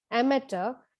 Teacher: The British pronounce it as amateur and the Americans pronounce it as amateur. In both, the stress is on the first syllable.